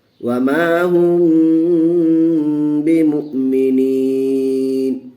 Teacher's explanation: میم ساکن کے بعد با آیا ہوا ہے، اس لیے ہم یہاں گنہ کر کے پڑھیں گے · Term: اخفاء شفوی